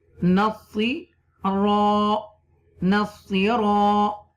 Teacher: because there is a zabar before alif, you will stretch a little bit. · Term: alif madda